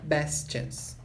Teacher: Ele não tem espaço aqui para sair, porque a próxima palavra começa com chance. Então, isso influencia o best, e aí o T não sai